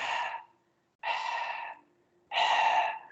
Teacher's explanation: no hay vibración solamente se produce la salida del aire a través de la glotis